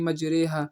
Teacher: یہ جو ری ہے یہ ہم رے پڑھیں گے امالہ کی طرح